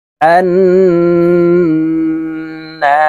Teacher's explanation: নুনের উপরে তাসদীদ আছে তাই আমরা গুন্নাহ করে বলবো